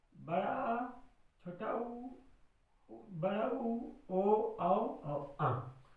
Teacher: जिन स्वरों के उच्चारण में मुख के जीभ का पिछला भाग प्रयोग किया जाता है उन्हें हम पश्च स्वर कहते हैं।